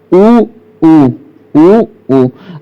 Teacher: आप ओठ क्या ले जाते हैं आगे को ले जाते हैं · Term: उ के उच्चारण स्थान